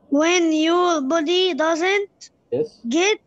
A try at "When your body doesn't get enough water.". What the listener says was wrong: enough. your, it's your, not you.